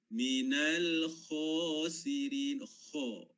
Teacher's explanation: Kha. Ya, kita punya lidah kita, bahagian pangkalnya terangkat. Naik ke langit-langit.